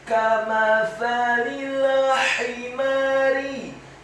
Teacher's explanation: Huruf mimnya dibaca tipis, fathah 1 harokat. Huruf fa-nya dibaca tipis, tarqiq, lidahnya agak keluar sedikit, fathah 1 harokat. Huruf lam-nya dibaca tipis, kasrah.